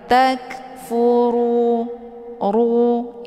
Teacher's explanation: Tak, ya, ada bunyi anginnya karena kaf ini bagian daripada sifat hamas. Takfuru, ru dibaca tebal, yaitu bacaan tafkhim karena ra ini berharokat zumma. Cara bacanya, posisi pangkal lidah juga terangkat ke langit.